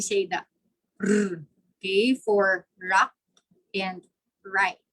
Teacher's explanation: Liquid when there's partial occlusion, okay, tongue tip raised and curled back near the alveolar ridge, like when we say the r, okay, for rock and right.